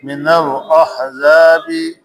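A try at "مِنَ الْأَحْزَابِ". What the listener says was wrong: زا کی سیٹی بجانی ہے، من الاحزاب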